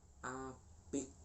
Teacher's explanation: lafal konsonan K itu mengalami konsonan hambat velar